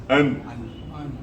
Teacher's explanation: لام کے مخرج سے ذرا پیچھے کی طرف ہٹ کر نون ادا ہوتا ہے